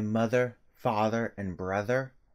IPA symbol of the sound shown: ð